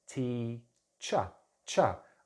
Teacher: But for instance, my name is, my title is teacher, cha. I'm not pronouncing the R at the end, it's just a ch and then a schwa, cha. So usually the R at the end of the word, it's not pronounced. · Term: non-rhotic